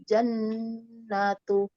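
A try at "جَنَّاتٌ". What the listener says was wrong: Nunnya panjang. Di sini nunnya ada alifnya sedikit kecil. Nah, itu berarti panjang. Nah, bukan. Jannatun. Nanya ada alif kecil di sebelahnya.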